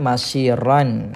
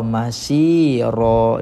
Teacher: Mad iwad kita baca dengan gugurkan satu baris.